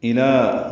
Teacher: حمزہ اقصی حلق سے لام کو باریک پڑھیں گے، دو حرکات لمبا کریں گے